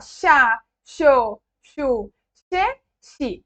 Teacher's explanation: o sotaque argentino em toda a sua plenitude. Esse som de X no lugar de la Y e de la X.